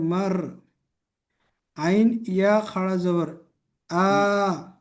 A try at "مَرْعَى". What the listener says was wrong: ইয়াটা পড়া হবে না, আইন খালা জবর আ।